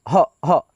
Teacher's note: ये जो दो विसर्ग है इसको हम लोग आधा ह के रूप में उच्चारण करते हैं